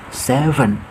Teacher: 7 ini cara mengucapkannya adalah bibir dihimpitkan, V ya.